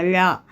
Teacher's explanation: நாவின் நுனி மேல்நோக்கி வளைந்து வருடுவதால் தோன்றும் எழுத்து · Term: சிறப்பு லகரம்